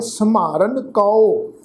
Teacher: संहारन पाठ में मम्मे अखर की टोन नूं भारा करके उच्चारण करना है।